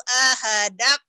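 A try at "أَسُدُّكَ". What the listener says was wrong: Aso itu sod bukan ahadak, asodak.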